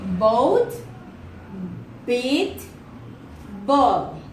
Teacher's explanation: Place of articulation is bilabial. I use my 2 lips to pronounce B. Manner of articulation is plosive, as in boat, beat, ball.